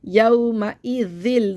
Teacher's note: दाल में दांतों में ज़बान लगानी है